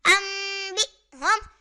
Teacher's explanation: اور یہاں حمزہ ساکنہ کو جھٹکا دے کر پڑھیں گے · حمزہ نون زبر ان، با حمزہ زیر بی، ام بی، ہا میم پیش ہم، ام بی ہم. یہاں نون ساکن کے بعد حرف با آ رہا ہے تو اقلاب ہوگا